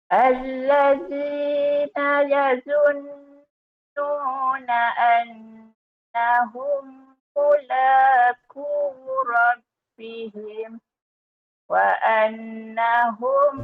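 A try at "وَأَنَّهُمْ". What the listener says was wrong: Gunnah bagi cukup dulu.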